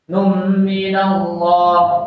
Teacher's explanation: Allahnya itu alif lam jalalah, tapi dibaca tafkhim, dibaca tebal.